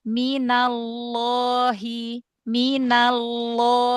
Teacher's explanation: Jaga ketebalannya. Jadi bukan cuman diangkat ee pangkal lidahnya ketika lamnya aja ya, tapi ketika madnya kan mad nih ya tetap tebal.